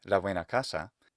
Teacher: But if I say la buena casa, then that B becomes the voiced bilabial approximate or fricative sound